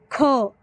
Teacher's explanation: खचा उच्चार करत असताना हवा ही जोराने बाहेर येते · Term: महाप्राण